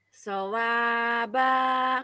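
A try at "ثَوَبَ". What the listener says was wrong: Pendek. Sawaba.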